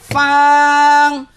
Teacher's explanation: নিচের ঠোঁটের পেট সামনের উপরের দুই দাঁতের আগার সঙ্গে লাগাইয়া